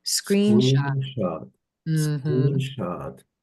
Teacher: my voice goes up, down, up, down.